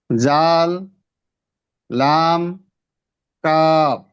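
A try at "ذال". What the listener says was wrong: এখানে শব্দ হবে না, জালের ক্ষেত্রে একবারে পাতলা, জাল।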